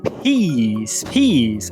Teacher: O P muitas vezes também é aspirado, isso significa que a gente solta o junto dele.